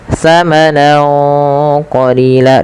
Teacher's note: Cara membacanya yaitu samarkan suara nunnya kepada huruf qf awalnya tsamanan karena bertemu qof tsaman qolila dan ditahan dengungannya sepanjang dua harakat. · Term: ikhfa